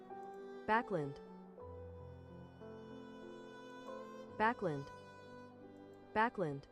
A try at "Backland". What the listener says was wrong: It is Lind. Backland. Backland. Backland. So it's not land or lund, but lend. Like when you lend the money, backland. I say backlund, but then it's backland. It doesn't sound like lund.